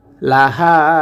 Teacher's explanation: খালি এলিফ আসার কারণে এক আলিফ টেনে পড়বো আও হা লাহা হা কণ্ঠনালীর মাঝখান থেকে উচ্চারণ করতে হবে